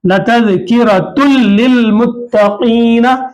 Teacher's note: और नून की आवाज बिल्कुल नहीं आ रही